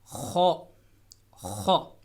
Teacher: जहाँ पे ज़बान ख़त्म होती है वहाँ से थोड़ा सा आगे करके ख अदा हो रहा है